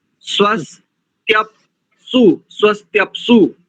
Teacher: जैसे स्वस उसके बाद त्या, तो त्या के साथ में अर्ध पकार को जोड़ देंगे